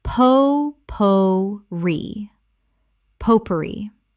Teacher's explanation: Three syllables with the stress on the final syllable from French.